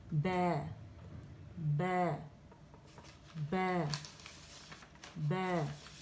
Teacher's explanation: اور الشفتان جس سے ہمارے پاس دونوں ہونٹ یعنی اسے ہمیں مخرج البا پڑھنا ہے. ٹھیک ہے، با باریک ہے، دونوں ہونٹوں کو دبا کے ملا کے جب ہم پڑھتے ہیں تو با ادا ہوتا ہے